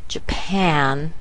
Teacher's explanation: we'll see that pan is stronger than the j. And this is where we will use our regular strong vowel.